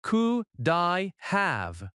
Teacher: Could I have sounds like could I have. The D connects smoothly to I.